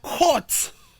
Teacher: Number 7, we have the long counterpart of it, the O sound. O sound, also indicated by the colon, indicating that it's actually a long sound.